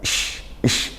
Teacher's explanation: shin, makhrajnya dari tengah lidah, ish, seperti dia, bukan s.